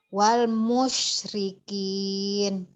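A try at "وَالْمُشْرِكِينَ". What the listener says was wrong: Alhamdulillah pinter.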